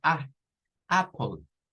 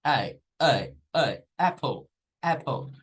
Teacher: diríamos nosotros pero es Apple Apple es a e a a es como bajar a y subir con una e pero al mismo tiempo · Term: el sonido corto